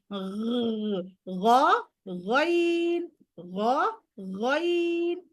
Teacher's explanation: পানি নিয়ে যে গার্গেল করলে যেরকম একটা সাউন্ড হয়